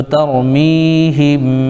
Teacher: ہا کے نیچے زیر لیکن میم ساکن تو ہم. یہاں پر میم ساکن کا اخفاء شفوی ہوگا، یعنی میم ساکن کے بعد با آ رہا ہے تو ترمیہم. ایک الف ناک میں آواز رکیں گے